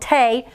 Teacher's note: the tay is open remember say it says its name because we don't have anything closing it in so it's a long vowel sound